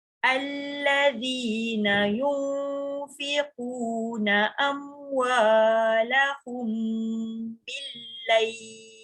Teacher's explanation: Amwalahum tu dengung. Sebab dia bertemu ba kan ikhfa. Ikhfa syafawi.